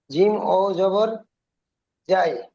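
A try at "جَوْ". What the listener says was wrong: জিম ওয়াও জবর যাও, যাই নয়, যাও।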